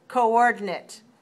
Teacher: 3 dots means 4 syllables. And we'll see that the stress is on the second syllable, so 4-2 coordinate.